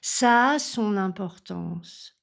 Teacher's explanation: donc là j'allonge le a ça a son importance et je suis obligée de faire la liaison en n son importance ça a son importance faites bien attention à à prononcer la nasale ont et pas son importance.